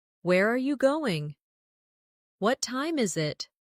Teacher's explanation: for information questions, those starting with who, what, when, where, why, how. The tone often falls at the end.